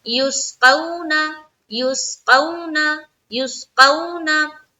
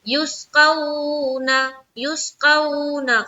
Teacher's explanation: واولین کو ہم نرمی کے ساتھ جلد ادا کرتے ہیں